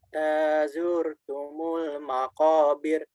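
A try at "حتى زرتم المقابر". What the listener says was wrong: Masih getarannya banyak. Dikitin lagi, Bang.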